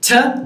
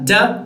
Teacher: Ta, da are the same sound, except for the fact that one of them is voiceless and the other one is voiced